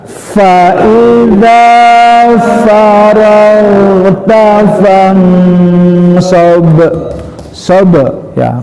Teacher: Huruf ba, huruf qalqalah, huruf yang mantul ya.